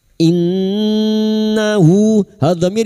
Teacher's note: Nun yang bertasdid guna musyaddadah kita dengungkan selama 3 harakat.